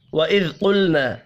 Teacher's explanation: ذال اور لام ساکن پر قلقلہ نہیں کریں گے